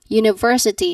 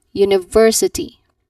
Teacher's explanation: the stress should be in the third syllable and then you should say it as ver not university but university.